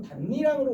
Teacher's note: 니은 첨가가 적용된 후 비음화가 적용되어 반니랑으로 발음된 것이다